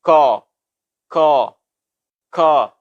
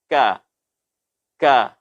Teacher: Suara yang dihasilkan adalah tipis, tidak membulat atau tidak berat. Sehingga apa dapat kita simpulkan bahwasanya huruf kaf ini adalah huruf yang bersifat tarqiq.